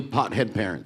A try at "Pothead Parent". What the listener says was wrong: it's Pothead Parent, just no S on the end of it.